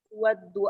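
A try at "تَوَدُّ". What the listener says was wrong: bukan tuwaddu, tawaddu. Ini terlihat harakatnya baik-baik.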